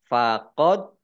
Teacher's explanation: Dal sukun bacaan qolqolah dibaca memantul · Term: kolkolah